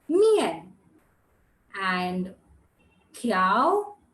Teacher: the fallen tone and the rising tone the fourth tone and the second tone